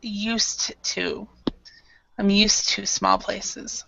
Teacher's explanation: this Ed is more like a t sound